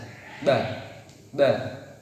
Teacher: Kalau ba itu makharijul hurufnya yaitu di intibaqus syafatain, yaitu ada di dua perut bibir sebelah dalam